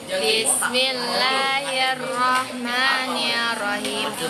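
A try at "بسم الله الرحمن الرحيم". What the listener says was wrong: Nirrahim. Bukan masalah nada, nirrahim bukan nerrahim.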